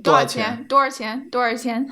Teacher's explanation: So I've started saying 多 少 钱. I don't really say the sh.